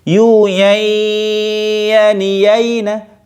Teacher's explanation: Gunnah itu asalnya dari hidung ya. Maka ketika membaca nun ya, nun masuk ke ya, terus kemudian dimunculkan gunnah di hidung. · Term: idgham bi gunnah